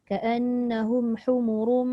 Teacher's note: ra tanwin tu itu dibaca tebal, tafkhim